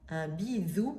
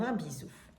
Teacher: il il s'agit d'une position lingoile trop avancée qui va jusqu'à l'interposition entre les incisives donnant un son moins sifflant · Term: sigmatisme Interdental